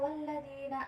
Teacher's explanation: alif lam syamsiah, cara bacanya yaitu dibaca idgham atau masuk ke karakter yang lam